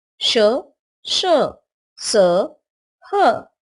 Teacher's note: इनका उच्चारण करते समय हवा के तेज गति से मुंह से रगड़ खाने के कारण ऊष्मा, गर्मी सी पैदा होती है, इसलिए इन्हें ऊष्म व्यंजन कहते हैं।